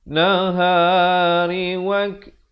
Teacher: Nahari wak ada hamasnya, bunyi kaf yang bertanda mati. Kaf ataupun ta kalau ada tanda mati asli dia ada bunyi angin sikit.